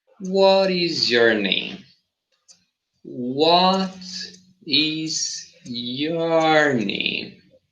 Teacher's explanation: so realize how my voice is going down